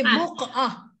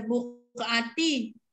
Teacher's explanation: Mematikan huruf tak marbutah dengan bunyi ha berlama badan. Mematikan tak marbutah itu menjadi bunyi ha. Jadi buqah.